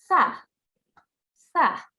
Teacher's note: the tip of our tongue softly touches the edges of the top 2 teeth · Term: TH sound